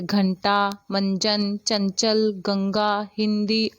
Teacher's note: इनके उच्चारण में ध्वनि जो है नाक से निकलती है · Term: अनुस्वार